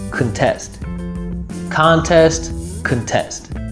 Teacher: the word contest as a noun has a first syllable stress, and as a verb has a second syllable stress